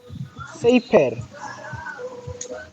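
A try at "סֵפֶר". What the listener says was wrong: Oh, good. Oh, nice. It's a fe, not a pay. One more try.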